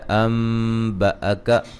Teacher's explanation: یہاں نون ساکن کا اقلاب ہے, نون کو میم سے بدل دیں گے